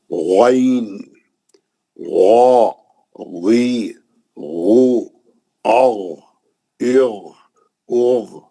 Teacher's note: اس کے بعد غین کی تختی, غین بھی اوپری حلق سے نکلتا اور وہ بھی مستعلیہ کہا ہے موٹا پڑھنا.